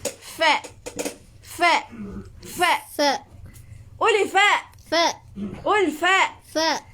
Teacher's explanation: huruf yang kita sebut menggunakan gigi dan juga bibir bawah. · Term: Huruf fa